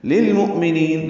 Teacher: لام ساکن پہ اظہار ہے